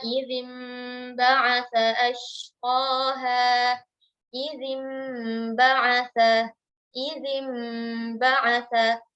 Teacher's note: iqlab artinya mengganti bunyi nun sukun atau tanwin ketika bertemu dengan huruf ba menjadi bunyi mim